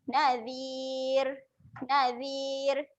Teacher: ra-nya keadaan yang nipis.